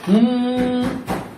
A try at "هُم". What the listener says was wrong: আর একটু লম্বা করো। গুণনা একটু লম্বা করতে হবে। হবে, কিন্তু তুমি গুণনাটা তোমাকে লম্বা করতে হবে। মনে করো মিনিমাম 1 সেকেন্ড। হুম হুম হুম